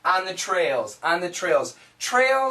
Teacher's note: say this really quickly on the actually sounds like on on it actually sounds like on none because the N can cancel the th